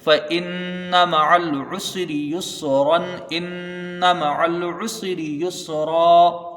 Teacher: نون ساکن تنوین کو ظاہر کر کے بغیر غنہ کے جلدی پڑھیں گے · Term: اظہار حلقی